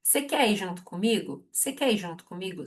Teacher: o você vai ser se na fala dos brasileiros.